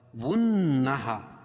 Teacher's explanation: واو کو نون میں سختی کے ساتھ اور نون پر تشدید ہے تو یہاں غنہ ہوگا. ہا الف سے پہلے زبر ہے تو الف مدہ.